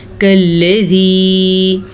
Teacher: کاف نرمی سے پڑھا جاتا ہے، اگر اس کو ہم موٹا کریں گے تو یہ موٹا قاف پڑ جائے گا۔ ویسے کاف دو قسم کے ہوتے ہیں، ایک باریک ایک موٹا۔